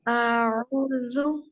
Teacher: जुबान की नोक ऊपर वाले 2 दांतों की नोक के साथ टच होगी · इसको नरमी से अदा करना है, इसमें बजिंग साउंड नहीं आनी चाहिए